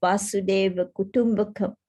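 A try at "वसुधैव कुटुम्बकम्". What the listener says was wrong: Not Vasudeva, not Vasudeva. Vasudhaiva, Vasudhaiva Kutumbakam.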